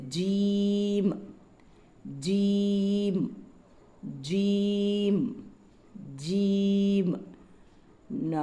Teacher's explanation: நாக்கினுடைய நடு நாக்கிலிருந்து இது உச்சரிக்கப்படும் ஜீம்